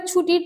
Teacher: ছুটির ছ টা তালব্য ব্যঞ্জন এবং ট হচ্ছে মূর্ধন ব্যঞ্জন